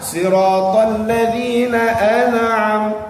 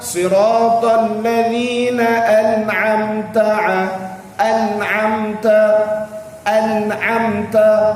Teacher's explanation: An'amta tak boleh dengung di situ. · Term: izhar